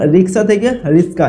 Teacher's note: রিক্সা থেকে রিস্কা, এটা হচ্ছে ধ্বনি বিপর্যয়ের একটি উদাহরণ।